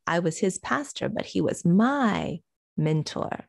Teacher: we have to stress that my because we're contrasting the possessive in this case usually you wouldn't say he was my mentor